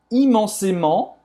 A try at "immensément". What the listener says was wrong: E não é imensamente, é Não é imensamente, tá? É com E. Aí esse E com acento agudo é E como se fosse fechado. Em português, o T no final não vai ser pronunciado, tá?